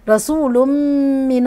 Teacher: من الله خلي بالي من ترقيق السين واقول رسو تمام رسول تنوين وبعديه ميم ادغام كامل تمام غنه المدغم فيه اللي هو الميم